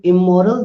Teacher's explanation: Because the first sound of moral is a bilabial sound, so it is easy for us to say immoral